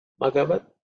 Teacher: Gha is 4th letter in the ka varga, so it has to be aspirated